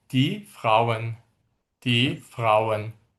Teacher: burda sondakı bu e sonuncu e saiti biraz yeyilir